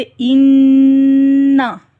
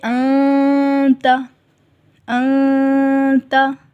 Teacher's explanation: جب ہم غنہ کرتے ہیں تب ہماری زبان اوپر کے تالو کے ساتھ لگتی ہے، جیسے اِنَّا، ٹھیک ہے، لیکن جب ہم اخفا کریں گے تو زبان اوپر تالو سے نہیں لگے گی